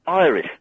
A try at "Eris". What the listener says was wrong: Eris. Eris? You said Iris.